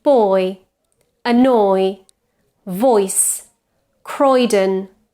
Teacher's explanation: Diphthong oi starts with an O position. It's quite close.